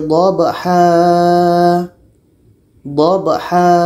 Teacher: Wal-adiyati dhabha, dhabha. Jadi tanwin atas kalau berhenti menjadi panjang alif. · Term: mad iwad